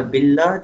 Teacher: اور اسی طرح باللہ جو ہے اس کے با کے نیچے زیر ہے، تو اللہ کا جو لام ثانی ہے دوسرا یعنی لام جو ہے اس کو ہم پتلا کر کے پڑھیں گے